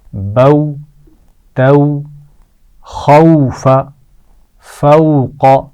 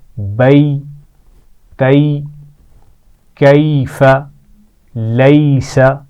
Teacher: واو ساکن سے پہلے زبر آ جائے یا پھر یا ساکن سے پہلے زبر آ جائے تو ان دونوں کی آواز کو نرم کر کے پڑھا جاتا ہے · تو یہ واو لین اور یا لین کی مثالیں ہیں. ان میں ہم آواز کو کھینچتے نہیں ہیں بلکہ کیا کرتے ہیں، نرم کر کے پڑھتے ہیں